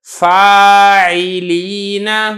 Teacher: حرف مدہ اور عین ان دونوں میں الگ الگ ہو اور دونوں صاف واضح کر کے ادا ہوں